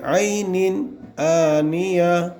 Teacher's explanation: عینن آنیہ ظاہر کریں گے اور بغیر غنہ کے جلدی پڑھیں گے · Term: اظہار